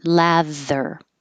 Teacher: Make sure you have a th with voicing.